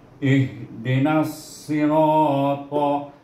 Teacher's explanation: Nas, huruf itu huruf sad, dan huruf sad itu baris bawah si, nasi, dan ra baris atas bertemu dengan alif huruf mat, baca dengan ra dengan tebal dan baca dengan mat asli 2 harakah